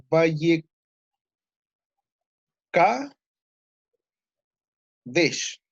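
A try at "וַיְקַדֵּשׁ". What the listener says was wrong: Lo único es que el Sheva, de nuevo, no se lee porque tiene vocal corta antes. es eso, es Vai Kadesh.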